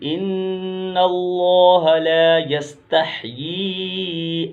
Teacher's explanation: لفظ اللہ سے پہلے نون پر زبر ہے تو اس کو پور پڑھیں گے یعنی موٹا پڑھیں گے